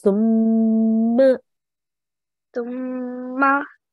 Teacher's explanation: So this is a meme with a shadda on the top. So we just have to make a nasal sound for about 2 seconds when we join.